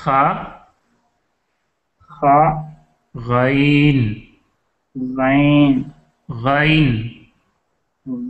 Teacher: ادنائے حلق ہے، وہاں سے کون کون سے حروف؟ خ اور غین. ہاں، اس کو ہم خے نہیں پڑھیں گے اس لیے کہ یہ اردو انداز ہے نا، ہم خا پڑھیں گے.